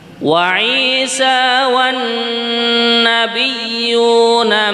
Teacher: Non tasydid ini gunnah, kemudian ya-nya juga tasydid kita tunaikan